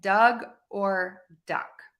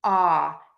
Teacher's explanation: that short o sound is an open vowel ah if you open your mouth and you get the tip of your tongue down low and the back of your tongue pulled high up